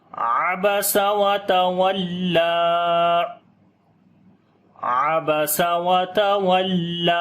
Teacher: عبس کسی حرف کو لمبا نہیں کریں گے، وتول لام کے اوپر شد ہے، تھوڑا سٹرونگ کر کے پڑھیں گے اور لمبا بھی کریں گے